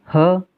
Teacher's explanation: ऊष्म व्यंजन में ह, ये भी कंठ से बोला जाता है। इन्हें हम कंठ्य भी बोलते हैं।